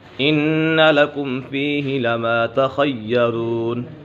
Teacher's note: ان لکم فیہ لما تخیرون، ان نون مشدد ہے، نون مشدد میں ہمیشہ غنہ ہوتا ہے۔ لکم فیہ، یہاں پر اظہار شفوی ہے۔